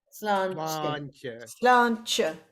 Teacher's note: the T would be a ch sound, sláinte